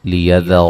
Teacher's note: را کو موٹا ادا کریں گے، حمزہ کو جھٹکے سے ادا کریں گے۔